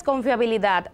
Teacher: si la palabra tiene la fuerza o la sílaba tónica en la última como en el caso de confiabilidad es aguda